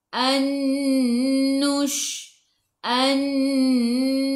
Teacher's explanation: nun tak ada sukun, selepasnya ada nun, di atasnya ada sabdu, idgham ma'al gunnah. Masuk bersama dengung.